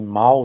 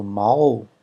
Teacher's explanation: ao som L passa a ser pronunciado como U, né, que é a semivogal U